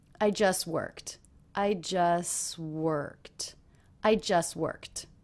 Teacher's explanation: just worked just worked he didn't release it this happened often when we have a word that ends in a cluster with a t when the next word also begins with a consonant in these cases often the T will get dropped